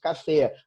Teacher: A força é na última sílaba. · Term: oxítona